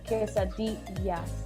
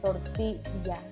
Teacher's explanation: in Spanish, when you have two L's together, they don't make the L sound. They make kind of like a Y sound. So here it's, instead of saying quesadillas, it's quesadillas.